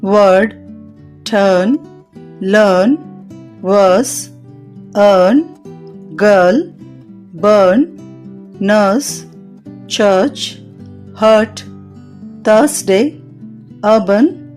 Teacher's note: వల్స్ లో మూడవది అ దీనిని పలికేటప్పుడు పెదాలు గుండ్రంగా లేని స్థితిలో ఉండి నాలుక కొద్దిగా తెరచి ఉంటుంది వోకల్ ట్రాక్ట్ యొక్క మధ్య భాగంలో వ్యక్తీకరించబడుతుంది